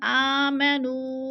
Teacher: نو پہ مد منفصل ہے، 4 الفی مد ہے، 4 الف کے برابر ہم نے اس کو کھینچ کر پڑھنا ہے